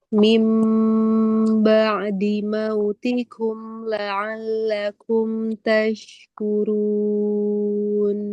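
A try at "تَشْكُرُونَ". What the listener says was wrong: Turun, arah suara naikin lagi.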